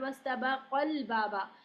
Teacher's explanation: ہم قاف کو ڈائریکٹ ملاتے ہیں لام سے، اسی لیے ہمیں نبر کی ضرورت پڑتی ہے کیونکہ ہم الف پڑھ ہی نہیں رہے. اگر ہم الف پڑھتے تو لمبا کر دیتے نا، وَاسْتَبَقَ ایسے پڑھتے نا. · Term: حذف